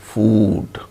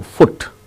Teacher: when the word ends with d sound then it is elongated · the word ends with d sound then it is elongated food when the word ends with t sound it is not elongated